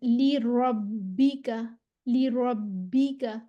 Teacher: रॉ जो है वो रॉ, इसको फिर हमने मोटा पढ़ना है।